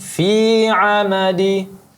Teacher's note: Fi cukup 2 harakat saja. Mad tabi'i.